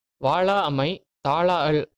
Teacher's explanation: லா என்னும் எழுத்தை மூன்று மாத்திரை அளவு நீட்டி ஒழிக்க வேண்டும் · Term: உயிரளபடை